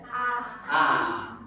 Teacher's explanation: विवृत्त का मतलब होता है मुंह जो है पूरा खुल जाता है।